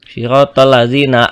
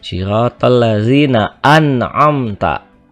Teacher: Nah, ini dibacanya tidak didengungkan, tidak diang ataupun juga tidak dimasukkan am. Jadi dibacanya tetap jelas an'amta dan tidak ditahan ya. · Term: izhar